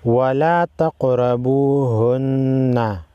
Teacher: الْمَحِيضِ وَلَا تَقْرَبُوهُنَّ حَتَّى يَطْهُرْنَ وَلَا تَقْرَبُوهُنَّ تا قاف زبر تق، قاف کو ہلا کر پڑھیں گے، قلقلہ کریں گے قاف پر